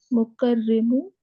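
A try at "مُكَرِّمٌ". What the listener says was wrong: Mukarrimun. Tanween. Why you are forgetting?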